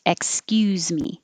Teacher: if it's the verb like excuse me then the s sounds like a z · If it's a verb, like excuse me, then the S sounds like a Z. Excuse me. Or you don't even need the X, you can just say excuse me, starting with the S.